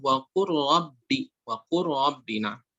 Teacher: لا نقول وقر رب، لو قر نحذف اللام كلها، إدغام كامل هنا اللام كلها تحذف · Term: idgham kamil